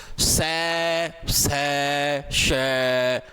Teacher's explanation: यानी आपकी जो वायु है गले की वो ऐसे रगड़ रगड़ रगड़ रगड़ खाके आपकी बाहर आएगी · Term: उष्म व्यंजन